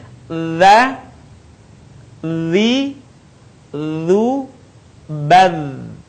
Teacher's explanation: Suara mengalir dengan lembut tanpa diiringi dengan mengalirnya udara. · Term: huruf dha